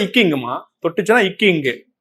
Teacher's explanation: நாவின் முதல் பகுதியும் மேல்வாயின் அல்லது அன்னத்தின் முதல் பகுதியும் பொருந்துவதால் தோன்றுகிறது